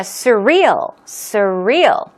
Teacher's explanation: stress goes on the real second syllable